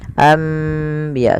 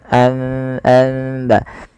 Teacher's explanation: Membalikkan suara nun menjadi suara mim. Awalnya anbiya Allah, karena bertemu dengan ba maka diganti dengan mim, maka dituliskan di atasnya dengan bentuk mim ini agar dibaca anbiya sambil ditahan 2 harokat. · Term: iklab